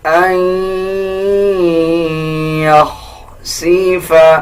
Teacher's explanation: نون کی آواز کو ایڈ نہیں کرنا، بلکہ اس میں ناک سے آواز لے کے جانی ہے یعنی غنہ کرنا ہے